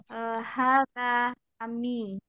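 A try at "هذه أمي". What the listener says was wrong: Ummi bukan ammi. Ummi.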